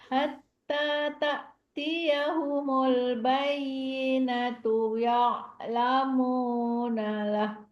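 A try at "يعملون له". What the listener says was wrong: Hati-hati ya lamu atau ya malu.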